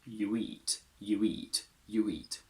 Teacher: a oo plus an intrusive w if it's followed by a vowel